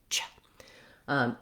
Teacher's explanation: I start my tongue in the position for T and I drop it down in the position for SH. So it sounds like ch. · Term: affricate sound